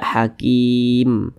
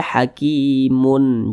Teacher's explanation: sukakan yang kita sukunkan huruf mim ini kan kita baca Hakim kalau kita berwaakaf tepat di huruf mim kita baca Hakim Jangan dibaca hakimun